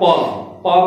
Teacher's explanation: आपका जो ओठ है ये दोनों सट जाता है प बोलने में